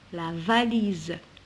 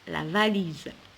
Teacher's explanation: je prononçais ce z parce qu'elle est entre deux voyelles quand on trouve un ace entre deux voyelles je prononce le